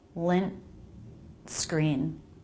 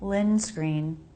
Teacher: I'm making it a stop. Lint screen. It's different from lin screen, where there's no break.